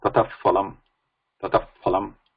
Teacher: Visarga followed by pa, pha, that sound is called Upadmani. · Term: Upadmaniya sound